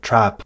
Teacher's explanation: le mot dress serait prononcé dress on continue la chaîne les les mots qui seraient prononcés avec le son a comme dans trap vont être prononcés ailleurs et là elle les prononce plutôt vers l'arrière